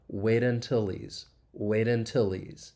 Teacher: And then the next word, he's, again, you can see all this elision going on. If we mute that H, we can link the final consonant sound in until, that L sound, with that vowel.